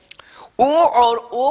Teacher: ओ और ओ का कंठोष्ठम, कंठ और ओष्ठ, कंठ और ओष्ठ दोनों की सहायता से ओ और औ बोले जाते हैं।